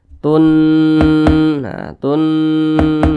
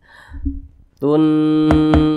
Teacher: Nun bertasydid hukumnya gunnah musyaddadah. Dibaca didengungkan.